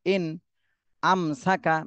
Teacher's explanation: মিম সাকিনের পরে বা মিম কোনটাই আসেনি এজন্য এই মিম সাকিনও স্পষ্ট করতে হবে